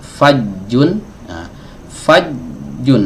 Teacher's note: ini suaranya tertahan ketika ee tengah lidah ini menempel ke langit-langit